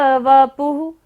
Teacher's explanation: विसर्ग है, तो यहाँ पर सारी सांस का विसर्जन करना है।